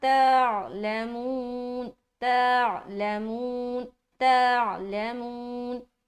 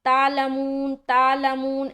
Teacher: सुनने वाले को लगना चाहिए कि आप ता के बाद आइन पढ़ रहे हैं और ता को आइन से मिला रहे हैं।